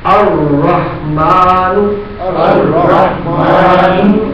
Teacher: لام تعریف نہیں پڑھا جائے گا اور را مشدد پڑھا جائے گا. لام یہاں سائلنٹ ہو جائے گا.